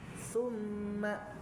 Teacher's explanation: Tumma tumma itu nempel gigi seri gitu ya. Gigi seri. Gigi seri bagian atas ya